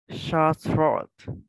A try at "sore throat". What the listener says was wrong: So it's actually not, there's not the sh, like it's not like Vietnamese S, it's a little bit softer, sore throat.